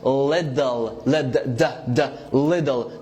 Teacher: American T is like not actually a T, it's a fast D. So I'm gonna pronounce this word as little, little, not little, little.